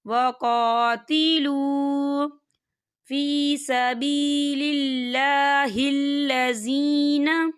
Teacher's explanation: یہاں واو ساکن ہے اور واو ساکن سے پہلے پیش ہے، تو یہاں پر واو مدہ ہوگا، تو ہم اسے دو حرکت کے برابر کھینچ کے پڑھیں گے۔